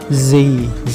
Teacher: ketika mengucapkan huruf z nggak ada udara yang keluar. Coba diperhatikan di depan mulutnya ketika mengucapkan huruf z, nggak ada udara yang keluar ya teman-teman.